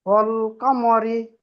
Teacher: রর নিচে জের আসলে জের হয় বারিক, বারিক করে পড়তে হয়।